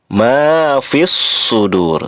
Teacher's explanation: Fis sudur, alif dur termasuk mad adlis sukun, ro-nya diwakofkan, ro-nya dibaca tafkhim tebal